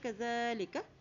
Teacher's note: زال کو نرمی سے ادا کریں اور اسے ایک حرکت لمبا پہ ادا کریں کیونکہ اس کے اوپر کھڑی زبر ہے، کذالک، ٹھیک ہے۔